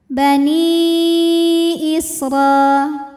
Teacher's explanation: pada kata Bani hamzahnya Alif dengan harakat kasrah pada kata Israil maka Nun kita panjangkan boleh empat boleh lima harakat Bani Isra huruf ro dibunyikan secara tafkhim karena berbaris di atas